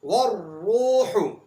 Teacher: اسی طرح تیسری مثال ہے را کی پیش کے ساتھ والروح، والروح کے اندر را کے اوپر پیش ہے، اس لیے یہاں پر را کو موٹا پڑا جائے گا۔